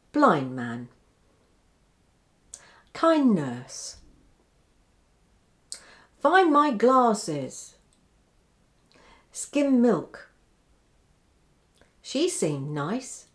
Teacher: this d sound often disappears when the following word begins with a nasal m or n sound watch listen and repeat blind man kindness find my glasses skim